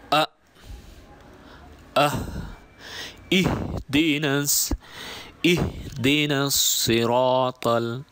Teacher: আকসায়ে হলক বা কণ্ঠনালীর মূল ভাগ থেকে হা এবং হামজা উচ্চারিত হয়।